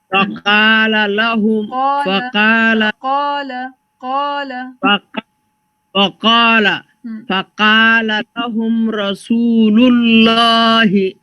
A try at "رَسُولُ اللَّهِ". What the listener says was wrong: No, you're not going to extend it too much. The lam, fatha, alif, saghira, la, it's going to remain that same. Rasulullahi, Rasulullahi.